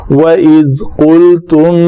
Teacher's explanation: جو لوتھڑا لٹک رہا ہے وہ بالمقابل تالو کے ساتھ لگے تو وہ قاف ادا ہوتا ہے. اگر اس سے ذرا آگے ہو تو قاف ہے وہ مخرج دونوں کے قریب ہے.